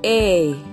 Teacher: this diphthong is a combination of two vowel sounds a and e